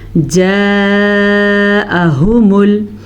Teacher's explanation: इस मद की मिकदार तकरीबन पांच हरकात अरबिया है। यानी कि 5 सेकंड तक हमने इस मत को लंबा करके पढ़ना है।